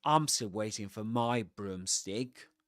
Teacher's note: you accent words like pronouns like he, she, it, or determiners like my, in this case, and you de-accent a noun like broomstick